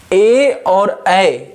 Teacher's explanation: ए का उच्चारण कंठ और तालु को जोड़ करके होता है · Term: कंठ तालु